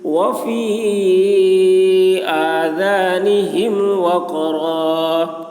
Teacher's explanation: قاف میں قلقلہ، یعنی قاف کی آواز ڈبل نکلے گی